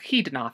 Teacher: with a velar fricative at the beginning